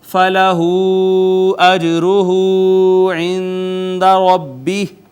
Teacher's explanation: یہاں پہ ناظرین مد منفصل ہے، جیم پہ قلقلہ ہے، واو المدیہ صغیرہ ہے، نون ساکن پہ اخفا